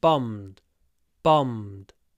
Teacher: when we pronounce bombed, again we have a long m before a little d at the end.